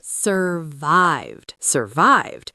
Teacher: Stress on the second syllable.